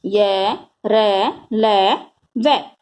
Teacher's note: इन वर्णों का उच्चारण करते समय वायु मुख के आंतरिक भागों को कम स्पर्श करती है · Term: अंतस्थ व्यंजन